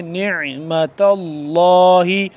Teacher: عین کو حلق کے درمیانی حصے سے ذرا کھچاؤ پیدا کر کے کھینچ کے